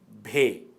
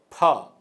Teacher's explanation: بھ کے تلفظ میں ہوا کے جھونکے میں اضافہ کیا جاتا ہے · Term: حکاری آوازیں